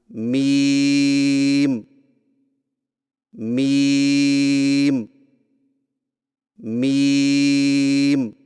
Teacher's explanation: میم کی ادائیگی میں ہونٹوں کے خشک حصے کو قدرے نرمی سے ملا کر باریک آواز میں پڑھیں